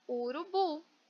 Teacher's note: Urubu, bu é a sílaba tônica mais forte